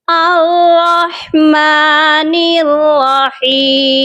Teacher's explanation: And the next letter is ہا، اور ہا جو ہے تھرڈ لیٹر ہے، اس کو ہم حلق کے سینٹر پارٹ سے پروناؤنس کریں گے · را مشدد ہے اور مشدد لیٹر کو ہم 2 ٹائم ریڈ کرتے ہیں اور ہارڈلی پڑھتے ہیں، اور دیکھیے گا را کے اوپر فتحہ یعنی زبر ہے، اور قرآن پاک میں را پر جہاں پر بھی زبر یعنی فتحہ آ جائے ہم را کو پر یعنی ہیوی پڑھتے ہیں۔